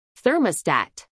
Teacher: a pronunciar en inglés por hablantes nativos thermostat tres sílabas thermostat acentuación en la primera sílaba ther